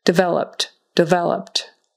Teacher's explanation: that Ed on the end becomes just a t- sound